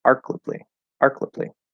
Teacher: so that middle syllable would turn into a schwa